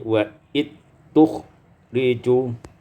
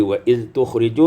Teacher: wa iz tukhriju idghamul zal fit ta, diidghamkan zal pada ta menjadi wa it tukhriju. Ya, jadi wa iz tukhriju menjadi wa it tukhriju.